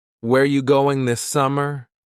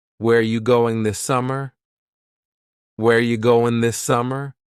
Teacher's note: Where ya, which is you, going, dropping the G.